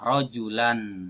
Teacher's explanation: Karena ada harokat yang double inilah, maka nunnya tidak perlu ditulis. Tapi ketika kita baca, itu terdengar suara nun sukunnya. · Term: tanwin